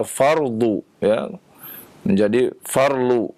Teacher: huruf dha, ya, banyak yang ya, terutama di Kepulauan Jawa ya menjadi L